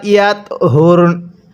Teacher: এখানে আমি রটা ওয়াকফের সময় পরিপূর্ণ উচ্চারণ করছি আর নুনটা হালকা উচ্চারণ করছি।